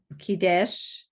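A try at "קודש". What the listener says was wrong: Where's your vowel for the kuf? Right, Kodesh, holy.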